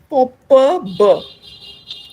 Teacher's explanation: it is the two lips that come together so we speak of them as bilabial plosives